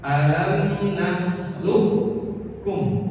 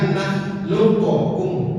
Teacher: ketika qaf bertemu dengan kaf, maka seakan-akan qafnya ini tidak ada, langsung kaf. Alam nakhluqkum, bukan nakhluqukum. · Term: idgham